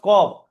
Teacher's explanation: জিভের গোড়া উপরে তালুতে লেগে উচ্চারণ হয়